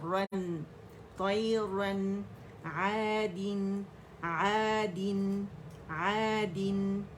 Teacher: رن را موٹا تھا نون باریک ہے